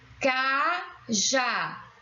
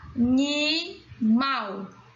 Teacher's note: todas essas palavras nós temos como sílaba tônica a última. Por isso que elas são palavras oxítonas.